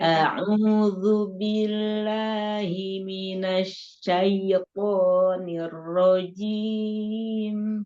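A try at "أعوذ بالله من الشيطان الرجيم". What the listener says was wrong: Sedikit lagi. Anak dengernya masih syait. Gitu, syait. Masih keseret. Syaitonir rajim.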